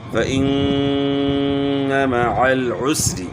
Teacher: ذکرک، ذال میں آپ نے خیال کرنا ہے کہ ذال کی آواز زا سے چینج نہ ہو جائے، ذکرک، فإن مع العسر، یہاں نون مشدد ہے، نون مشدد میں جو ہے ایک الف کی مقدار کے برابر ہم نے غنہ کرنا ہے، اور غنہ جو ہے ناک کی ہڈی سے ادا ہوتا ہے